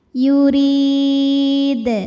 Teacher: Huruf dbunyikan secara tarqik sebab barisnya di bawah yaitu berbaris kasrah. Maka dibacanya tipis pangkal lidah datar. Yurid. Ketika berhenti di sini hukumnya mad arid lukun.